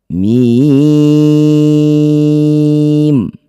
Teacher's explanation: Huruf mim tidak ada harakat maka baca huruf aslinya mim. Yang ada hanya tanda mad. Panjangkan enam harakat.